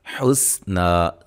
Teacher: حسنا، سین کو سیٹی سے نا مد اصلی ہے، ایک الف کے برابر لمبا کریں گے